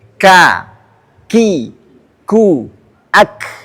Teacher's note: kalau ada K kita sebutkan K ah itu akan mengalir nafasnya itu disebut dengan hames